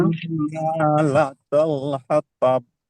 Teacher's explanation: لام جو ہے نا اس کو پر نہیں پڑھیں گے، موٹا نہیں پڑھیں گے